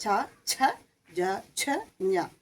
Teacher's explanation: ച എന്ന് പറയുന്നത് നമ്മൾ ഈ വായുടെ മുകളിലേക്കും അല്ല, പല്ലിൻ്റെ നടുവിലായിട്ട് ഒരു ഭാഗത്ത് അവിടെ നാവ് ഇങ്ങനെ അതിൻ്റെ മധ്യഭാഗം, നാവിൻ്റെ മധ്യഭാഗം പോയി മുട്ടുമ്പോഴാണ് ച എന്ന അക്ഷരം ഉണ്ടാവുന്നത്. അത് ചവർഗം മുഴുവൻ അങ്ങനെയാണ്.